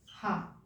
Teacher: Plus जो विसर्ग है उसको भी हम कंठ के अंतर्गत रखते हैं। विसर्ग और काकल्य वर्ण जिसको हा बोलते हैं, हा, ये कंठ के अंतर्गत आता है